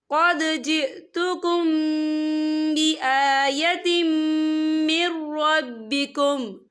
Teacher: और यहाँ देखिए बिआयतिम, ता के नीचे तनवीन है और तनवीन के बाद जो है मीम आ रहा है, और मीम हुरूफ यरमलुन में से है, तो यहाँ पर इदगाम होगा। हम यहाँ गुन्ने के साथ पढ़ेंगे।